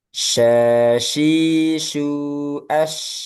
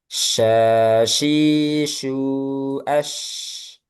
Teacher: Menyebarnya di mana? Di tengah lidahnya di sekitar makhrajnya diistilahkan dengan tafasyi.